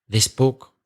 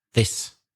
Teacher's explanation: the singular, this book, for example, is short and s sound with no vibration.